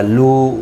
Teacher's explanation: و مدہ ہے، ایک الف کی مقدار کے برابر کھینچ کر پڑھیں گے